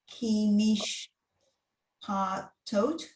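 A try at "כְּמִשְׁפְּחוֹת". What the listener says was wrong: That's that letter after the pay is a chet. Kamishpachot. Right, just like your mishpacha. It's the plural of mishpacha.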